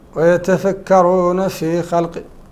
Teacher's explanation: يتفكرون فاء من حروف الهمس العشرة